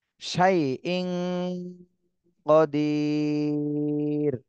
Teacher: তানভীনের পরে এখানে ইকফার হরফ আসছে এজন্য এই তানভীনে গুন্না করতে হবে ইকফা গুন্না শাইন কদির